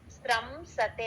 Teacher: గాని ష గాని ష గాని ఈ మూడు అక్షరాలు ఏమి వచ్చినా సరే ఆ సున్నాని పూర్తిగా అం అని పలకాలండి ఎం సౌండ్ లాగా